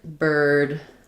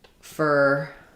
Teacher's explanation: So, basically, you need a tight um tongue. You can either be curling the front of the tongue back or bunching it back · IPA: /ər/